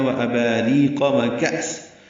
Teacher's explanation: کأس کا حمزہ ساکن یہ جھٹکے سے ادا ہوگا